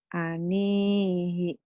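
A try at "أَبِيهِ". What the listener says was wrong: Titiknya di bawah.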